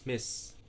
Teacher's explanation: nassau voice i is short hi from unroaded monophthong and then s is alveolar fricative and voiceless